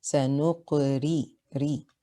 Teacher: It is heavy on the 3rd scale. The ra has a kasra. It is light.